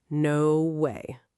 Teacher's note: with a flat, level tone, can be a clear refusal